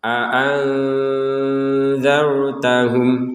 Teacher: nun sukun ya bertemu dengan zal dibacanya dengan samar